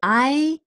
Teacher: So I actually sometimes even drop this N and replace it by an intonation thing.